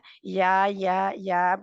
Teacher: है या या या बहुत आसानी से अदा हो जाती है या के लिए जुबान जो है दरमियानी हिस्सा जुबान का तालू के साथ जाकर चिपकता नहीं है पीछे रहता है लेकिन ऊपर की तरफ उठती